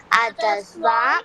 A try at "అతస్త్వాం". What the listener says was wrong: అతస్వాం కాదు అతస్త్వాం స్వాం కాదు అతస్త్వాం